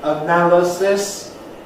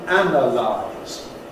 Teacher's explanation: the word stress which goes on the /næl/ in /əˈnæləsɪs/ but on the /æn/ in /ˈænəlaɪz/